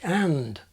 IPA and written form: ən (and)